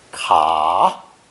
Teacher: It's pronounced third tone, ka, or sometimes cha.